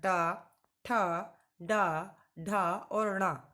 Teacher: जब बोलते हैं तो हमारी जिह्वा मूर्धा का स्पर्श करती है। आपने देखा होगा इन सब, अगर आप उच्चारण कर रहे होंगे मेरे साथ साथ, तो आपकी जीभ जो है बिल्कुल ऊपर की ओर टच करके इन वर्णों को बोल रही होगी।